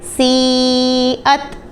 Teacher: اس کے بعد سین یا زیر سی، حمزہ تا زبر ات، سی ات۔ اب یا کے اوپر مد تھا تو اس کو ہم نے 4 حرکات یعنی 4 سیکنڈ کے لیے اسٹریچ کر کے پڑھا